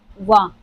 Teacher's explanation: पूरे वर्णमाला में सिर्फ एक ऐसा है जो दंत ओष्ठ से उच्चारित होता है।